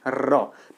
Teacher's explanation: जीभ बिल्कुल फड़फड़ा रही है, उसका अगला भाग तालु को टच कर रहा है, लेकिन अंदर से आती हवा से टकराने के कारण फड़फड़ा रहा है या परकंपित हो रहा है या फिर कंपन कर रहा है, ठीक है। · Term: परकंपित या लुंठित व्यंजन